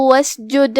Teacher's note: حرف السین ہے اور اس پہ جزم ہے، لہذا ہم سین کو ظاہر کریں گے. آخری میں دال ہے اور اس پہ جزم ہے، لہذا ہم دال کو ہلاتے ہوئے یہ کلمہ پڑھیں گے.